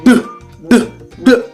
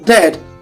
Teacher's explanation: So now you can hear the plosive sound d, d, d on dead